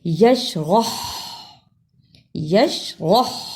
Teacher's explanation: اس ہا کی آواز حلق سے رگڑ کر نکالنی ہے